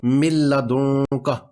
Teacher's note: من لدن کا، اس میں نون ساکن کے بعد لام ہے تو نون ساکن کی آواز لام میں مدغم ہو جائے گی · نون کی آواز بالکل نہیں آ رہی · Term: ادغام